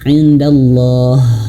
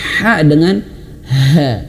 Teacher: Tapi kalau dia sukun dia mati maka menjadi ha, dan kadar ha-nya itu sama dengan ha ini. Indallah, mengalir nafas dan nafasnya itu besar karena makhrajnya itu di pangkal tenggorokan.